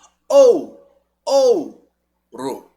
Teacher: ele decresce é um ditongo decrescente mesma coisa ouro ou ou forte pro fraco O som tá caindo decrescendo